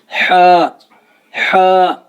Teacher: جو ہمارا حلق ہے اس کے تین حصے ہیں، ادنا حلق، وسط حلق اور اقصی حلق، یعنی حلق کا سینے کی طرف والا حصہ، حلق کا درمیانی حصہ اور حلق کا منہ کی طرف والا حصہ۔ جو ہا ہے یہ حروف حلقی ہے اور حلق کے بالکل درمیانی حصے سے ادا ہوتا ہے